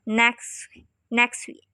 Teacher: For example, in the utterance, he lives next week speaker would generally leave out the T in next saying next week, next. Again, here the reason is a comedy of effort, and in some instances the difficulty of putting certain consonant sounds together while maintaining a regular rhythm and speed.